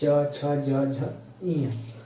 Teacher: आपकी जो जीभ है वो ऊपर वाले तलुओं को छुएगी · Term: तालु वर्ण